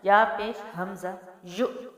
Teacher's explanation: حمزہ ساکنہ کو ہمیشہ جھٹکا دے کے پڑھتے ہیں